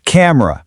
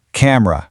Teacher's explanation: It is incredibly tempting to say camera, but that middle e, it disappears entirely. It goes from a clunky three beat word to a sharp two beat word. Camera. You really want to focus on that r sound at the end. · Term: sharp 2-beat word